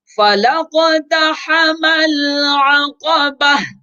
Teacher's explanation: عقبہ اصل میں ہے العقبۃ، گولتا ہے تو وقف کی صورت میں اس گولتا کو ہا بنا دیں گے